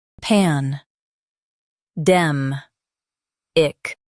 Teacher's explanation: Stress dem and keep pan light.